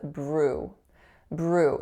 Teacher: So a voiced B going into an R. So make sure you don't tap behind your teeth, because that'll make it a non-American R. And then it's going into an oo sound.